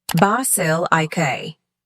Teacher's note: Basilica has stress, On the second syllable